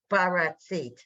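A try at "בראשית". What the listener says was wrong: Not ba. Bit. Berashit. It's an SH. Berashit.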